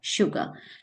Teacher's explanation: This is sugar, s, starting from s, but it is producing the sound of sh, sugar. Similarly, if we go to another word like this, sure, sure.